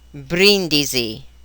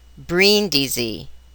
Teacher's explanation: Italians position the tongue differently than English speakers in order to pronounce the letter R. Italians touch the roof of the mouth right behind the front teeth very lightly with the tip of the tongue to achieve a rolling or trilling R sound, a subtle sound for words containing one R, and a more emphatic sound for words containing a double R.